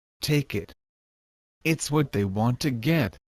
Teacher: the T sound is almost silent, but not exactly silent. For this the tip of your tongue needs to touch on the front wall of your upper gums. It needs to be more like a resting position. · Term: held T